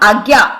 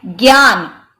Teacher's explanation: यानी आधा ग और य रूप में यह ज्ञान होता है